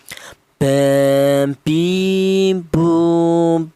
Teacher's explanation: Huruf ba ini keluarnya huruf berasal dari kedua bibir yang rapat